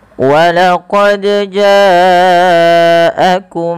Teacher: Karena dia huruf qalqalah. Dal memiliki salah satu sifat qalqalah yang artinya ittirab atau memantul, ya, ada getaran dan pantulan. Maka ketika membacanya huruf dal ini wajib mantul.